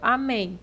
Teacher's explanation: A sílaba mais forte é o men, é a última sílaba. Então, aqui nós temos uma oxítona número 3, né?